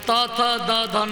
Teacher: जब जीभ दांत में टकराएगी तो त थ द ध न ये पांच अक्षर का उत्पत्ति होता है, जिसको दंत्य वर्ण कहा जाता है।